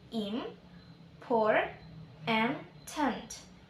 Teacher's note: kata important itu memiliki 3 puncak sonority atau puncak kenyaringan yang terletak pada i, o, dan e